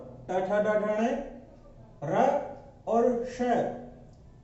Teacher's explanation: ट ठ ड ढ ण, र और श, इनका उच्चारण स्थल होता है मूर्धा